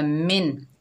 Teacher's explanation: तो यहाँ पर हरूफ हलकी में से हा, छोटी हा आ रही है, तो नून साकिन को बग़ैर इक्फ़ा के गुन्ने के पढ़ेंगे, यानी ज़ाहिर करके पढ़ेंगे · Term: इज़हार हलकी